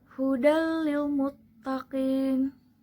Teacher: peleburan bunyi nun mati atau tanwin tanpa disertai dengan dengungan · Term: idgam bilagunnah